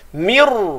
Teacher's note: Jangan sebut mir, tu nipis, tak tebal. Mir ra terus tebal satu harakat